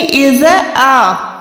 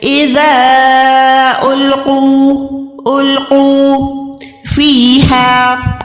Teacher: ذا کو 2 سیکنڈ کھینچ کے پڑھنا ہے، چھوٹی مد کو۔